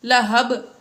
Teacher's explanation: با وقف کی وجہ سے ساکن ہو گئی، اس لیے یہاں پر ہم نے قلقلہ ظاہر کیا